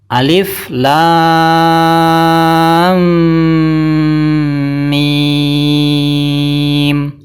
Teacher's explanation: lam adalah panjangnya 6 harakat dan termasuk huruf muqataah yang punya akhiran mim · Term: mad lazim mutsaqqal harfi